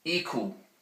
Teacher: The E vowel, the high front vowel, it's like E, so don't say I, it's E.